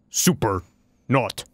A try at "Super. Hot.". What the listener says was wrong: Oh, you said You said not. You said not instead of hot.